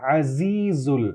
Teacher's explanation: یہاں پہ عزیز میں ذال نہیں ہے، زا ہے، عزیز یہاں پہ بزنگ ساؤنڈ آنی چاہیے